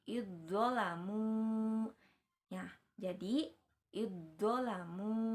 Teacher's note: jadi huruf za-nya itu dileburkan ya. Jadi seolah-olah tidak dibaca